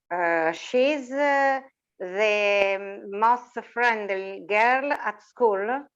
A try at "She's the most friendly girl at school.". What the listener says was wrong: Very good. Or friendliest.